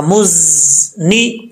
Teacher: ज़ा सिटी के साथ पढ़ा जाएगा